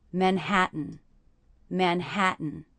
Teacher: the last syllable, is really just the N sound. So the letter A there is representing the schwa sound.